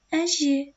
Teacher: Әже сөзінде ә жіңішке дауысты, е жіңішке дауысты. Әже, яғни бұл жіңішке дыбысталатын сөзге жатады.